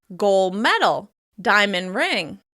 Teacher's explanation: If you hear someone talking about certain valuable items, such as a gold medal or a diamond ring, you may hear them drop the /d/ sound from the end of the first word